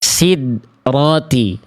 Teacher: Di sini ada dal sukun. Ini contoh pelafalan yang kurang tepat, yaitu tidak dipantulkan huruf dalnya.